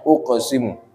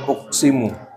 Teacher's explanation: Jadi jangan uqsimu, harus ada bunyi qalqalahnya. Tapi bunyinya juga jangan berlebihan.